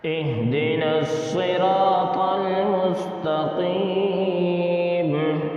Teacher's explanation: مستقیم میں یا مدہ ہوگا اس لیے اس کو بھی تھوڑا کھینچ کر پڑھیں گے